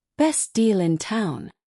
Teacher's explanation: Notice how deal in connects sounding like dealing. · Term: connected speech